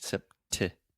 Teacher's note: Sept. I'm really aspirating, which means I'm breathing air out of my mouth and going t, making that pop sound. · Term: true T